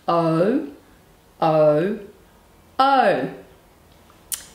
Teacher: lips go into a tight circle so it goes oh oh our voice is on it's a noisy sound and it's also a long sound